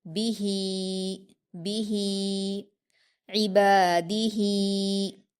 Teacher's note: با پر حرکت، اس کو جلدی پڑھیں گے۔ ہا پر کھڑی زیر ہے، اس کو 2 حرکات کھینچ کر یا مدہ کی طرح پڑھیں گے